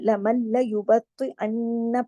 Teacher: نون ساکن ہے لیکن اس کے بعد تشدید ہے نا لام کے اوپر، یہاں لام نون کی آواز نہیں آئے گی. لمل، میم جو ہے وہ آگے والے لفظ کے لام سے جا کے جڑے گا کیونکہ لام پہ تشدید ہے.